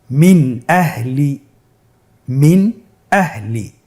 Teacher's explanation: আমরা জানি হামজা ইজহারের হরফ। তাহলে আমরা এখানে নুন সাকিনকে স্পষ্ট করে পড়ব, গুন্না ছাড়া পড়ব।